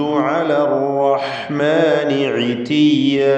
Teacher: അർ-റഹ്മാൻ റാ തഫ്ഖീം ചെയ്ത് തടിപ്പിക്കണം. ഇതിയ എല്ലാ അക്ഷരങ്ങളും ക്ലിയറായി മഖ്റജിൽ നിന്ന് മൊഴിയണം.